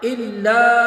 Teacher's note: لام پر مد منفصل، 2 الف اس کو کھینچیں گے